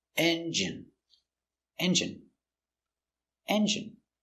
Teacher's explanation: stress on first syllable